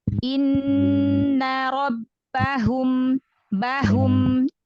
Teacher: Memang hak itu punya sifat khofa, tersembunyi. Kenapa? Karena dia tuh makhrajnya paling jauh ya, di bawah ya, tenggorokan bagian bawah. Jadi memang harus kita jelaskan ya, biar nggak hilang.